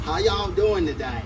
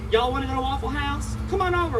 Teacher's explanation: But if you get down south to the little Dixie portion, it has a much more of a southern draw. >> Elongating those vowels a little bit and saying y'all every sentence.